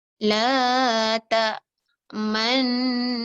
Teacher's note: Maka nun yang mati tu kita memoncongkan bacaannya. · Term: ishmam